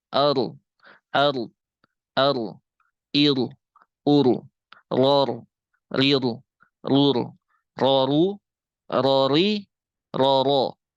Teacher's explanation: Nah kalau inhirof ro ini dia aliran suaranya mengerucut